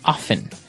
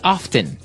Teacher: Now with pronunciation, some people like to pronounce often, right? They kind of leave out the strong T sound. Well, other people say often.